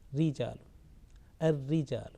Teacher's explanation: raw with shadda and kasra or without shadda but with kasra will always be pronounced with thin sound